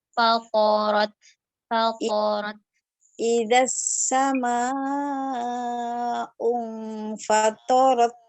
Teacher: Nah, di huruf to-nya nggak ditasydidkan. Langsung aja.